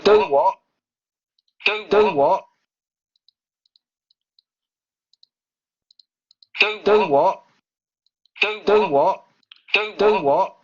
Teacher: justamente sería un sonido glotal oclusivo sordo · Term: glotalización